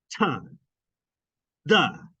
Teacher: Because again, your tongue blocks the flow of air between your tongue and your alveolar ridge. Pressure builds up and it pops out. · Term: alveolar plosives